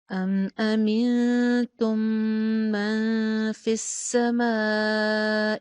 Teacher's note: تم کے اوپر تا کی پیش پہ ہونٹ آپ کے میکسیمم گول ہوں گے